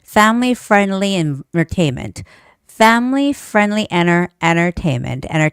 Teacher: as I read this passage faster, I was able to feel that I was making a lot of soft T sounds